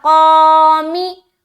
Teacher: तो यहाँ पर हम करेंगे मिम मक़ामी, मिम्मा, उसके बाद क़ामी, क़ा में अलिफ मद्दा कर रहे हैं, अलिफ खाली है, उससे पहले ज़बर है, लिहाजा अलिफ मद्दा करेंगे और क़ाफ को मोटा अदा करेंगे और अलिफ भी मोटा अदा होगा। अलिफ जब भी मोटे हर्फ के साथ आए अलिफ मोटा पढ़ा जाएगा, बारीक हर्फ के साथ आए बारीक पढ़ा जाएगा।